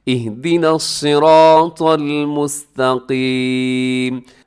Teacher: मुस्तकीम में काफ मोटा रखना है और सिराता में तो को मोटा पढ़ना है।